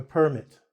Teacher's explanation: I emphasized PER-mit here, which is a piece of paper giving you authority to do something.